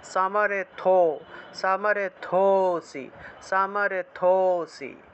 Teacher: এই যে এখানে দেখুন আরেকটা লুপ্ত ও আছে, লুপ্ত ও থাকায় এই থোটা থেকে একটু টান দিতে হবে